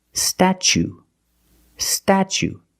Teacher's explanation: When I see words like this with TU plus a vowel, like TUE or TUA, as the second or third syllable, the T is pronounced ch, like chicken and change, ch